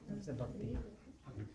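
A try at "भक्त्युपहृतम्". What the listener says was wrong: Not bhakti. There should be no E sound there. In that quarter, there is no E at all. Tadaham bhaktyupahitam. Again, if you add the E, you add an extra syllable. Tadaham bhakti upahritam. 9 syllables. You've got too many. We need 8. Tadaham bhaktyupahritam. 8.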